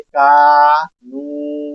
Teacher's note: پہلے الف مدہ اور پھر واو مدہ، دونوں کو ہم ایک برابر لمبا کریں گے